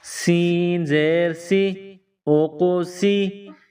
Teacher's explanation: سین، سین کو پتلا کر کے باریک پڑھیں گے، سیٹی کی آواز پیدا کریں گے